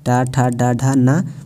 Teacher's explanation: कंठ के ऊपर मूर्धा होता है, उससे उच्चारण जो होता है उसे मूर्ध वर्ण कहते हैं